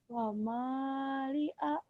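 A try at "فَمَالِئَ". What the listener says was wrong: fama, bukan wama atuh. Fama. Kedengarannya kayak wama. mulutnya kurang ngebuka itu teh. Meme gitu. Fam. Bibir kayak ageng kumaha itu tuh terus ngebuka.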